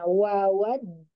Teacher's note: Wawadu dua harokat. Nah, kemudian ditipiskan ya wawnya.